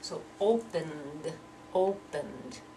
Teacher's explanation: that N sound is voiced, so we have to pronounce that ED like a D.